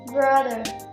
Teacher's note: It consists of three consonant sounds, namely voiced bilabial stop, voiced alveolar approximant, voiced dental fricative